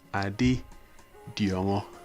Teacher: we have a low tone a low tone and we have a high tone to finish with